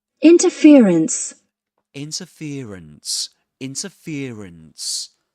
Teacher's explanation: So this is an interesting word because it's double stressed